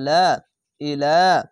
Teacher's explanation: খাড়া জবর এক আলিফ টেনে পড়বেন। হামজা জের ই, লাম খাড়া লা, ইলা।